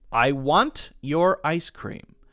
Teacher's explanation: if I say I want your ice cream and I make the T sound, it sounds very crisp and crunchy